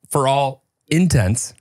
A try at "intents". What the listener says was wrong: You were making it sound like it was intense. Like, ooh, that's really intense.